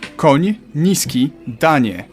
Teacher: You start with an N and soften it to ni.